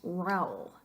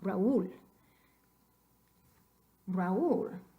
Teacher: Tenemos que dividir en dos sílabas este diptongo potencial. Acento escrito sobre la U.